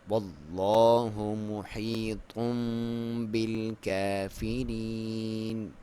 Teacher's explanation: یا ساکن سے پہلے زیر ہے، اسے یا مدہ کہا جاتا ہے، اور 1 الف کے برابر لمبائی، وقف میں زیادہ لمبا بھی کر سکتے ہیں.